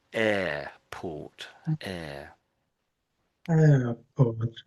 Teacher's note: And in English, it's a very quiet R